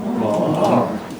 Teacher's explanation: there will be people in Belfast, especially Belfast, who would pronounce M-A-N as Mon.